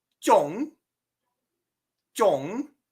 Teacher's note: your o is going to have a flat long vowel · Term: first tone